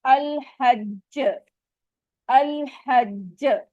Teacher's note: تو یہ very strong کلکلا ہوگا جو شدہ سائن کے ساتھ آئے گا